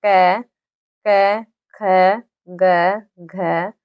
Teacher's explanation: तो यह जो है यह बोला जाता है हमारे कंठ से बोला जाता है जो हमारी आवाज निकलती है इनकी जो ध्वनि निकलती है वह हमारे कंठ से निकलती है